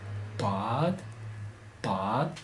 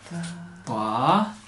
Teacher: 다 자세히 들으면 혀가 입천장에서 툭 떨어지는 소리 나요. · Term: 다드